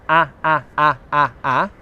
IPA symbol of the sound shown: a